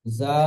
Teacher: জালের উপরে খাড়া যাবার আলিফ মাদ্দার সমান, তাই খাড়া জাবারকে এক আলিফ পরিমাণ টান দিয়ে পড়তে হয়।